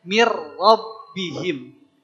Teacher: hanya dilebur saja Nun sukunnya ke Mir mirbihim jangan pakai gunah karena kalau pakai gunah jadi lucu ya mirbihim ya di sini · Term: bila gunah